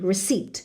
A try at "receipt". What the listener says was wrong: no P please P is silent